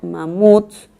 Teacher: Cuando yo la silabeo, digo mamuts, la última sílaba es tónica.